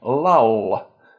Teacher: Think of the difference between light and dark L in English, where my accent, for example, has the difference between light L at the beginning of syllables and dark L at the end, like in lull. The one at the end is velarized, where the body of the tongue is bunched up at the back of the mouth to produce a lower pitch sound.